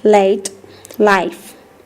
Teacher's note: the liquid sounds it is a voiced alveolar sound